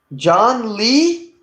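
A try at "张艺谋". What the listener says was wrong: Zhang Yimou. not John, not John. Zhang, like with a Z. Zhang Yimou. E is spelled Y-I.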